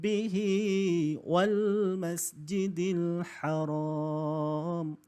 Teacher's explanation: tidak lagi bunyi dengan bunyi tanwin tapi dia terus pergi kepada bunyi mim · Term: iqlab